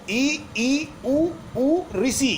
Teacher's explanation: समृत स्वर वो स्वर होते हैं जिनका उच्चारण करते समय मुख द्वार सकरा हो जाता है, यानी हम बोलते हैं तो बिल्कुल ऐसा लगता है मुंह लगभग बंद हो गया हो।